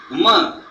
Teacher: But a portion of the sound passes through the nostril, and that is why it gives a nasal sound.